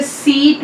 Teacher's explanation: देखिए जैसे सीट में जो ई की साउंड है, बड़ी ई, यहाँ पे ये इसकी पोजीशन है, it is front close अनराउंडेड vowel